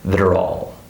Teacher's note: The next word, all, starts with a vowel, so we're also going to link it because the word before it ends with a consonant.